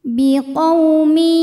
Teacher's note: tanwin dileburkan ke ya disertai bunyi dengung. Jadi ini di sini kita tahan. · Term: idgham bi gunnah